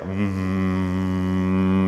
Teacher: And this is where our sounds come out for consonants and sounds like M. Notice how it's coming through the nose. We vibrate a lot for our nose.